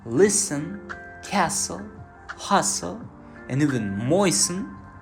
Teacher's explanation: In words like listen, castle, hustle, and even moisten, we write T but never pronounce it. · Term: silent T